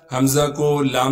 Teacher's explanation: حمزہ کو لام سے ملائیں گے، اس لیے کہ لام پر تشدید ہے، تشدید ہونے کی وجہ سے تھوڑا سا ٹھہراؤ رکھیں گے۔ لام کے بعد الف مدہ ہونے کی وجہ سے لام کو ایک الف کے مقدار کھینچیں گے۔